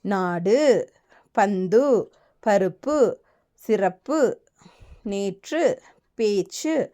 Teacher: அப்போ தனி நெடில்லுடனோ பல எழுத்துக்களை தொடர்ந்தோ சொல்லுக்கு இறுதியில் வல்லின மெய்யோடு சேர்ந்து வரும் உகரம் தனக்குரிய ஒரு மாத்திரையிலிருந்து குறைந்து அரை மாத்திரை அளவே ஒலிக்கும் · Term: குற்றியல் உகரம்